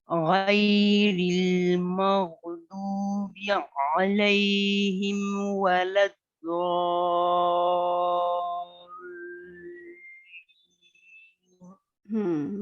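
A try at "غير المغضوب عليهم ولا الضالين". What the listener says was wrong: بس یہ کہ مجھے لگا زو آپ نے پڑھا دوات کو نا اپنے زوالین اور زو بھی ایسے پڑھا زا ساؤنڈ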